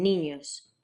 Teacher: an N made with the middle of your tongue against the roof of your mouth